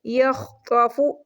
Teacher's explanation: خوا بھی موٹا حرف ہے، اس کو بھی موٹا پڑھیں گے